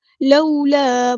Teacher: واولین آیا تو نرمی سے موڑیں گے